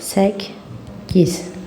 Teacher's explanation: söz ortasında gələn qoşa k samitlərindən ikincisi cingiltili tələffüz olunur